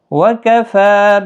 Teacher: فا کے اوپر کھڑی زبر ہے، ایک الف کی مقدار کے برابر کھینچ کر پڑھیں گے۔